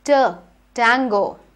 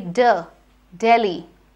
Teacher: Voiceless means that if you place your hand on your chest and then you say T, you will not feel a lot of vibration. But the D is voiced, which means when you place your hand on your chest and say D, you will feel a lot of vibration